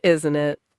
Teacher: Down on isn't it? Definitely not a question.